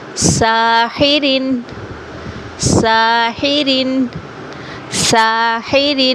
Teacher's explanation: سین کو تھوڑا سا لمبا کریں گے، کھڑی زبر ہے۔